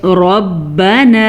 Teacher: را کو پر پڑھ لیجیے گا کیونکہ را ہمیشہ ہی پر پڑھی جاتی ہے جب اس پہ زبر ہو، اگر را کے نیچے زیر ہوگی تو را باریک پڑھی جائے گی، ٹھیک ہو گیا۔